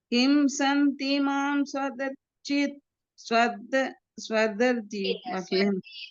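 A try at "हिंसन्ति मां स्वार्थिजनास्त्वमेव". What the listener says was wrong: ஸ்வார்த்தின்னு மாத்திக்கோங்க, ஒரு கால் போட்டுக்கோங்க. ஹிம்சந்தி மாம் ஸ்வார்த்தி ஜனாஸ்த்வமேவ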